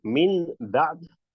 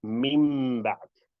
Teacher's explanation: rather than saying min ba'd, you'll merge them together and you'll say mim ba'd. So the reason technically it's referred to as the iqlab is because you perform a qalb or a flip from the noon to the meme straight away.